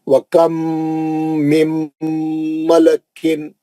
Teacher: نون ساکن کا میم آیا تو میم کا غنہ